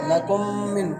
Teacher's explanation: کم کے میم پر ادغام مع الغنہ ہوگا کیونکہ میم ساکن کے بعد میم آیا ہے، میم کو سختی اور جماؤ سے پڑھیں گے